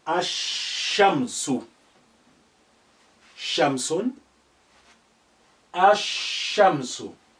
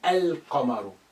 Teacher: You cannot hear the sound of lam. That's been suppressed, but it's remained there. Why? Here, ash-shamsu, the sheen here is suddenly is carrying shadda.